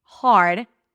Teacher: Now, if you pronounce the second word, hard, it's a really hard job, right? Hard, and you don't open your mouth enough. You kind of like allow the R to take over the word because you get all nervous because there is an R here, so you just get prepared too soon to pronounce it, and then it's going to sound like heard.